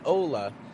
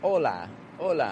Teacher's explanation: it's not strong weak but it's two kind of strong syllables